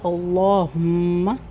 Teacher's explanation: یہاں پر سٹارٹنگ میں لام موٹا ہوگا، اللہم، میم مشدد ہے، اس کی سختی کا خیال رکھنا ہے۔